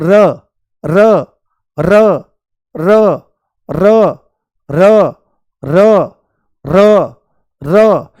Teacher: जैसे बोलो र र र र र र र र र, तो आप इस चीज को नोटिस करो ध्यान से, आंख बंद करके, कि जीभ तुरंत ऐसे चलती है, आगे की तरफ चलती है, और चलने के साथ में ही ये कहां लगती है, ऊपर वाले मसूड़े पर लगती है। बहुत हल्की सी टच होती है उसकी टिप पॉइंट, ऐसे आगे लगती है और लुढ़कती हुई सी मालूम होती है ना, मुंह में लुढ़कती हुई सी आगे मालूम होती है। · बहुत हल्की सी टच होती है उसकी टिप पॉइंट, ऐसे आगे लगती है और लुढ़कती हुई सी मालूम होती है ना, मुंह में लुढ़कती हुई सी आगे मालूम होती है। और जब आप र बोलते हो तो ऐसे कंपन भी उठता है।